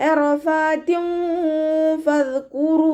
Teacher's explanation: തെൻവീനിന് ശേഷം ഇഖ്ഫാഇൻ്റെ ലെറ്റർ ആയിട്ടുള്ള ഫ വന്നിട്ടുണ്ട്. തെൻവീനിലുള്ള നൂനിൻ്റെ സൗണ്ടിനെ മറച്ചു വെച്ചിട്ട് മണിച്ചോതി കൊടുക്കുക. റഫാത്തിൻ എന്ന് പറഞ്ഞിട്ട് നൂനിൻ്റെ സൗണ്ടിനെ കേൾപ്പിക്കരുത്.